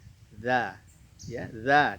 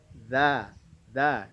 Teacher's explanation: Tidak ada napas yang mengalir ketika kita mengucapkan bunyi huruf za. Za, za. Tapi bunyinya mengalir karena memiliki sifat rokhawah di antaranya.